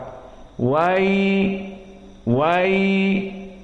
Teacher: Maka wailun, waw di sini waw muraqqaqah, dan ya wailun, ya juga termasuk huruf yang muraqqaqah, walakin huna ya sakinah, dan ya sakinah qablahu fathah, maka dia adalah sifat yang lin. Maka di sini mad lin, dan mad lin mempunyai hukum 2 harokat